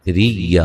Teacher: را کو باریک پڑھنا ہے، را کو یا سے سختی سے ملانا ہے